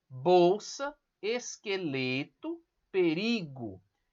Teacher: palavras paroxítonas, quando a sílaba mais forte é a penúltima